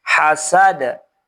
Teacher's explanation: Hasad dalnya das ee dal disukunkan. Ketika dal ini disukunkan karena waqaf maka dibaca qalqalah wusto.